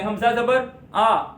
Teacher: حمزہ کے اوپر زبر منہ کھول کے پڑھیں گے، اس کو لمبا نہیں کریں گے